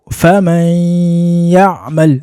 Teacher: hazamo sifa ya ghunna rero ikaba ica hano mu gice cyitwa al-khayshum ni kino gice cya hano hejuru mu zuru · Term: idgham bi ghunna